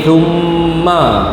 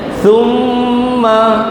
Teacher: Okey, thumma, kat situ hukum dia wajibul gunnah, ya. Mim dan nun bertanda sabdu, wajib dengung nama dia, wajibul gunnah, ya. Jadi sama juga, bila dengung dia jadi 2 harakat, ya.